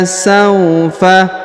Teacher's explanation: huruf sa diayun sekali atau dipanjangkan dua harakat juga Karena di depannya terdapat wau sukun